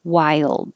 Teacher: you don't have to release the d sound